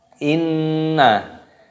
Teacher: ada nun tasdid, hukumnya dibaca gunnah. Cara membacanya yaitu apa? Kita dengungkan.